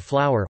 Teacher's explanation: the vowel sounds of flower, /aʊər/, form a triphthong or disyllable, depending on dialect